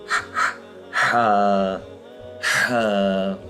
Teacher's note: بالکل حلق کے نچلے حصے سے نکلے گا۔ ہا، جیسے آپ یہ کرتے ہیں نا ہاتھ کو رکھ کے، تو جس جگہ سے یہ آواز نکل رہی ہے اسی جگہ سے ہا نکالے تھے، ہا ہا، ٹھیک ہے جی؟